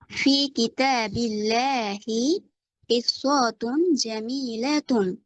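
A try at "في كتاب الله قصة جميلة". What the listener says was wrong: টান দিচ্ছেন কেন? কিসসাতুন জামিলাতুন।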